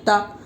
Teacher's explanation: تا کے اوپر زبر ہے، زبر کو جلدی بڑھے، تھوڑا بھی نہ کھینچے. زبر کی آواز اوپر کو اٹھتی ہے، آواز اور منہ کھلے ہوتے ہیں